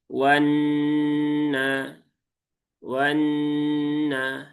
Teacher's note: pastikan ditahan dulu 3 harokat, sempurnakan, masukkan ke rongga hidung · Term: gunnah